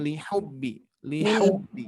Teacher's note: Wa innahu li, hati-hati li-nya kepanjangan, jadi langsung li hubbi, li hubbi.